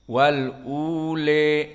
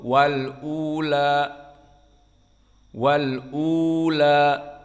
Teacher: tahqiq hamzah dan mad tabi'i ataupun mad 2 harokat untuk badal dan difatahkan di akhirnya la, bukan le.